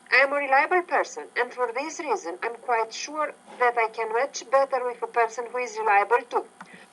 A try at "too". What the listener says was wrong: Who is reliable to? Ooh, longer vowel sound there. To, ooh, to, blue, fruit.